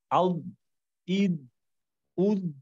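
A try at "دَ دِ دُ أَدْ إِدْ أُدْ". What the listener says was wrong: আচ্ছা ঠিক আছে, মাশাআল্লাহ।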